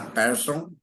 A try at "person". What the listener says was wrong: Não precisa, não precisa chiar a língua, é só o